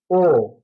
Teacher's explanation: এপাশেও উখ রস উচ্চারণ করি তখন ঠোঁট গুণাকার হয়ে যায় এবং উ থেকে যখন ও আসি তখন আরেকটু গোলাকার হয় ও এবং এইটা সামনের দিকে পিছনের দিকে যে ভরটা পিছনের দিকে